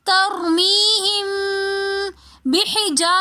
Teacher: آگے میم ساکن اور اس کے بعد با رہی ہے تو ہم یہاں پر تھوڑا سا غنہ کریں گے